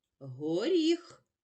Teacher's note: в кінці слова Ми чуємо глухий приголосний х